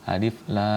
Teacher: Lamnya tidak didengungkan pada huruf ro. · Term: mad lazim harfi mukhaffaf